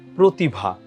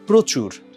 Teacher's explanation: এর আগে র ফলা যুক্ত যেই অটা আছে সেটা হচ্ছে সংবৃত হয় মানে ও এর মত উচ্চারণ হয়